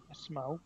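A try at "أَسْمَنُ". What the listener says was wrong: असमनु नाम है, नून है, असमनु, ठीक है।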